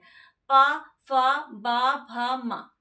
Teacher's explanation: यहां पे होठ से उच्चारण होता है प फ क्योंकि हम इसमें अपने मुंह को मुख को बंद करते हैं